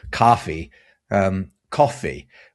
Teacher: we've got that o sound or a sound if you're speaking general American